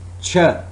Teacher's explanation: its voiceless post alveolar affricate sound